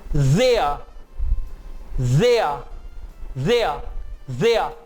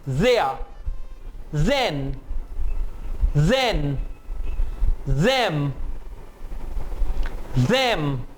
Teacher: You will feel the vibration on your throat and your ears also. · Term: Voiced TH